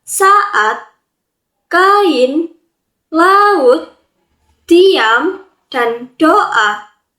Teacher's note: setiap vokal mempertahankan bunyinya masing-masing dan tidak menyatu menjadi kesatuan bunyi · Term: deret vokal, Deret vokal